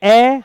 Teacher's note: देखिए ए और आ, बोलिए ए, मैंने कहा ए तो कहां से आवाज हुई, कंठ से, कहां से आई, गले से, कंठ से, तो ए और आ क्या है, कंठी है, यानी इनके उच्चारण में कहां से ध्वनि निकलती है, कंठ से